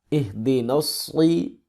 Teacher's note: موٹا کریں، سیٹی کی آواز سے پڑھیں